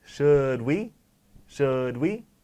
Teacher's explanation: just make the D really not silent, but hit it very softly.